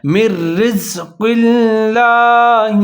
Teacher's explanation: قاف کو موٹا کرنا ہے لیکن لفظ اللہ اس کو اپنے باریک کر کے پڑھنا ہے